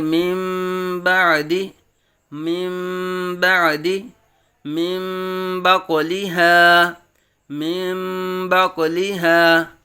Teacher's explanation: نون ساکن اور تنوین کو میم سے بدل کر اخفاء کریں گے، یعنی غنہ کریں گے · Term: اقلاب